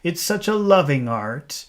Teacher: he's saying heart but he doesn't pronounce H's